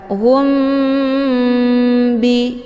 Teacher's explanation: cara bacanya mimnya ditekan kemudian ditahan lebih kurang dua kali ketukan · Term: Ikhfa sfawi